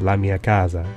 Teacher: The change from S to Z is an instance of intervocalic voicing.